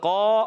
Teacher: مگر قاف الف زبر قا، الف مدہ ایک الف کھینچیں گے